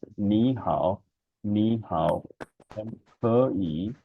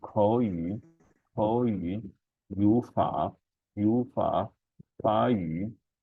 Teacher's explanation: So the third tone of the first syllable will change into the second tone. It becomes ni hao, and ke yi, because the third tone of the first syllable will change into the second tone.